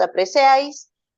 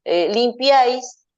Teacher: la combinación de tres vocales que se pronuncian dentro de la misma sílaba está compuesta por una vocal abierta entre dos vocales cerradas eh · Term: triptongos